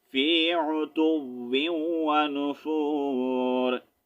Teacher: را کو ہم ساکن کریں گے آیت کمپلیٹ ہو رہی ہے